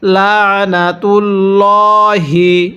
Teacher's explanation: কারণ আল্লাহ শব্দের এই যে লাম আছে এই লামের পূর্বের হরফের উপরে যদি জবর অথবা পেশ থাকে তাহলে এই আল্লাহ শব্দের পুরা লামটাকে মোটা করে পড়তে হবে। এখানে লামের পূর্বে পেশ আছে।